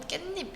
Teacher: 자, 지금 어디에도 니은이 없는데 니은 뒷말 첫 소리 모음 앞에서 니은 소리가 덧나고 있어요